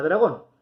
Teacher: La palabra dragón es una palabra aguda, porque su sílaba tónica es gon.